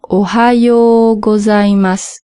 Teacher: Ensuite, là où j'ai marqué yo ou, en fait, le ou, on l'entend pas tellement et c'est plus comme si on prolongeait le o de yo.